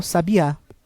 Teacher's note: E sabiá, sílaba tônica no último A, é um substantivo que se refere a um animal, sabiá.